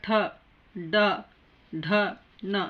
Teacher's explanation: ಛ ಅನ್ಬೇಕಾದ್ರೆ ಚ, ಛ ಹಲ್ಲಿಗೆ ಹಲ್ಲ ಅಂಟುಕೋತದೆ. ಟ ಅನ್ಬೇಕಾದ್ರೆ ನಾಲಿಗೆ ಮೇಲೆ ಅಂಗಳಕ್ಕೆ ಬಡಿತದೆ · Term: ಟ ವರ್ಗ